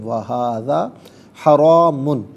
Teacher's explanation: حرام میں را پر زبر ہے، را کو پر کر کے پڑھا جائے گا